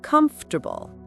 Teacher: And the stress is on the first syllable.